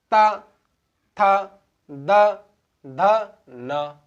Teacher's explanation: वे व्यंजन जो उच्चारण करने पर दांतों को स्पर्श करते हैं, स्पर्श कर कर बोले जाते हैं, उन्हें दंत वर्ण कहते हैं।